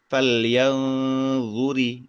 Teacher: Samar dalam artian eh menggantungkan pengucapan kita menuju ke huruf dha tapi belum nempel ke huruf dha-nya itu sendiri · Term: hukum ikhfa